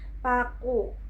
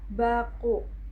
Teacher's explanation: Saat kita mengucapkan bunyi B pada kata baku, pita suara bergetar dan kita akan merasakan sensasi dengung atau gerakan saat jari kita menyentuh leher. Sementara saat kita mengucapkan Pu, pita suara tidak bergetar. Bunyi ini murni hanya hembusan udara dari bibir tanpa adanya getaran di tenggorokan.